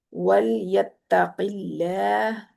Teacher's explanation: قاف کو پر کرنا ہے، لام کو باریک رکھنا ہے